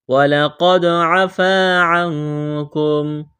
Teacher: قاف کو موٹا کرنا ہے، دال پر قلقلہ کریں گے